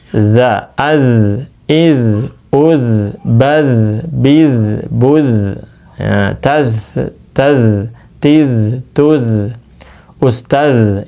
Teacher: Kalau sukun jadi ngalir. Bukan dipantulkan. Jangan jangan jangan, tapi ujung lidah ke ujung gigi atas.